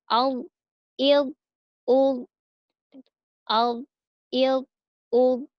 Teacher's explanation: bagian sisi lidah bertemu dengan geraham atas, kemudian pangkal lidahnya naik juga ke atas-atas. Jadi, al, al, al, ya, mulutnya seperti biasa, tapi dia terdengar tebal. · tebal karena pangkal lidahnya naik ke atas, ya. Pangkal lidahnya naik ke langit-langit. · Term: huruf do